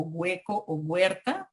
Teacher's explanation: desarrollo de la oclusiva velar sonora ante el diptongo hue